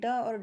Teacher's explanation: ड और ढ क्या है? मूर्धन्य व्यंजन है।